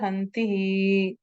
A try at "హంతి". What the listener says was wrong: No, hanti is a verb. No visargas. It's a verb. Hanti.